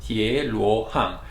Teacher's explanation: So you have two rising tone and one falling tone